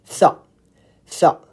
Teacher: So your tongue is coming out, but it's between your upper and lower front teeth.